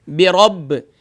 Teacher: با کا مخرج دونوں ہونٹوں کے تر حصے سے ادا ہوتا ہے، حروف شفویہ میں سے ہے۔